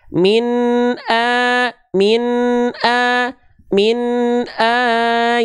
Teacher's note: bacalah dengan jelas tanpa ditahan tanpa disertai dengung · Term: izhar halq